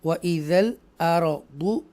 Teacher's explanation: रा को पुर पढ़ेंगे क्योंकि उससे पहले ज़बर आ रहा है इसलिए